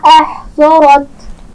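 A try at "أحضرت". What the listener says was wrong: احضرت. ضاد کے مخرج کا خیال رکھیے، موٹا پڑا جائے گا.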